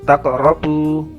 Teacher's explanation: Taqrabu qalqalah sugro, karena huruf qaf berharokat sukun